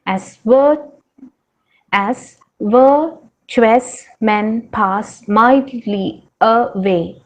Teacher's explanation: Iamb, that is foot of poetry, follows a pattern of unstressed syllable followed by stressed syllable. Unstressed, stressed. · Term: iambic tetrameter